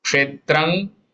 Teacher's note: Kshetrang, nasal nga for anuswar here.